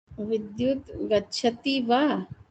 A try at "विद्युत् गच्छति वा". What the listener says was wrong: Correct. I like the tone also.